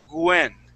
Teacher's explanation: sometimes people who speak Spanish they pronounce that W as a g and they say Gwen